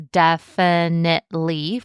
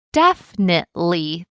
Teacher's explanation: Some people may pronounce it as definitely four syllables, but others may reduce it all the way down to definitely three syllables. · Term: collapsed syllables